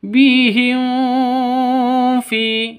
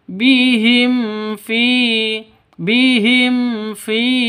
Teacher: bertemu dengan Fa cara bacanya jelas terang Kenapa karena izhar syafawi izhar syafawi itu jelas terang sama dengan izhar halq tidak boleh dengung tidak boleh panjang